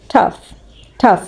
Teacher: እዚች ጋር ያለችው GH መጨረሻ ላይ እንደላይኞቹ ሳይለንት አትሆንም ፍ በሚለው ድምጿን ያለችው ማለት ነው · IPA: /tʌf/